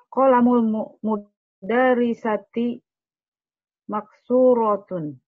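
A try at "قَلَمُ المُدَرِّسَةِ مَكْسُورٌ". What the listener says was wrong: Masih salah baca baca harokatnya, ulang lagi.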